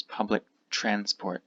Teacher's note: again the k sound disappears public transport when it fits when it fits this T disappears